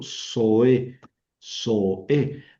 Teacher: aquí tenemos dos vocales juntas y las dos son largas y las dos son fuertes, ¿verdad? Ahí no hay diptongo.